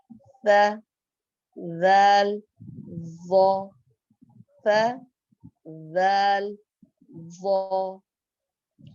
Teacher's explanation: 13واں مخرج نوک زبان اور نیچے کے درمیانی دانتوں کے کناروں سے 3 حرف نکلتے ہیں، صاد زا سین صاد زا سین. 14واں مخرج نوک زبان اور اوپر کے درمیانی دانتوں کے کناروں سے 3 حرف نکلتے ہیں، ث ذال ظا ث ذال ظا.